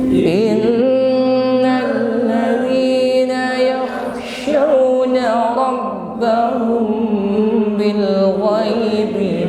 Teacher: diawali dengan huruf nun yang bertasydid, ada gunnah musyaddadah, ya, ditahan, tidak terburu, ya, ditahan sampai berdengung. Namun tidak perlu ditekan.